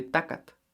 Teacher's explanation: There are some towns, a few even in the Huasteca, that instead of saying TL, changed it all to T. So instead of saying tlacatl for man, they'll say tacat.